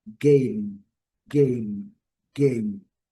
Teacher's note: Aqui eu coloquei o sublinhado no M porque a letra M em inglês tem que ser pronunciada ao final das palavras, fechando-se a boca